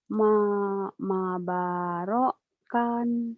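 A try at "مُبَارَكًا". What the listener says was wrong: Bukan, Mak. Itu ada kepalanya tuh. Kalau ada kepalanya bunyinya U. Mu. Kan mim, M-nya jadi bukan ma, tapi mu. Kan ada domah ini. Jadi mu. Kalau ada gini bunyinya U. Maksudnya U-nya, M-nya jadi mu gitu. Bukan U, ini mim.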